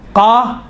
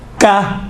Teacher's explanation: قاف اور کاف میں دیکھیں دونوں کا تلفظ ایک ہی ہے، فقط یہ ہے کہ جو زبان کی جڑ ہے، زبان کی جڑ سے قاف نکلتا ہے، اور زبان کی جڑ اگر نرم والی جگہ، اوپر والی نرم والی جگہ سے جب ٹچ ہوتی ہیں تو قاف نکلتا ہے، سخت والی جگہ سے ٹچ ہوتی ہیں زبان کی جڑ تو کاف نکلتا ہے۔